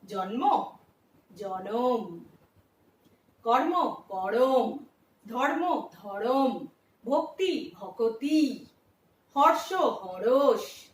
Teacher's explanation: যুক্ত ব্যঞ্জন বর্ণকে ভেঙে মাঝখানে স্বরধ্বনি নিয়ে আসার যে নিয়ম, তাকেই বলা হচ্ছে মধ্য স্বরাগম